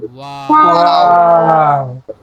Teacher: দুই ঠোঁট গোল করে সামনে খোলা রেখে উচ্চারিত হয় ওয়াও